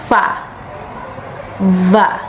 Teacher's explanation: consonant sounds which are produced by contacting the upper teeth and the lower lip fa as in the word face VA as in the word